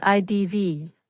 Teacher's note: I would have becomes IDV, a double contraction used in speech. Both had and would become D.